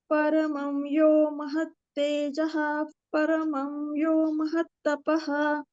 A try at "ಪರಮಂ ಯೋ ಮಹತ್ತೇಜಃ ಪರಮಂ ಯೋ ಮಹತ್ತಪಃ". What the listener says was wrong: ತೇಜಃ ಬೇಡ, ತೇಜಫ್ ಪೂರ್ತಿ ಹೇಳಿ. ಪರಮಂ ಯೋ ಮಹತ್ತೇಜಃ ಪರಮಂ ಯೋ ಮಹತ್ತಪಃ.